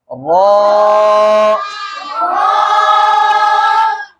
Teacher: किनारे वाले मसूड़ों के साथ लग कर अदा होता है, ठीक है? रॉ, कैसे पढ़ोगे?